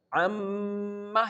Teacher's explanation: So we perform the gunna, and the nomination of gunna is that the sound goes in your nose and make a vibration, and you have to perform the gunna at least for 2 counts · Held the n sound in your nose at least for 2 counts.